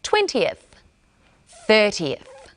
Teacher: Instead of just a th sound, we add an eth sound.